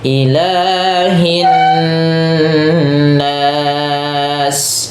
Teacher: Nasnya panjang juga dengan n-nya ditahan.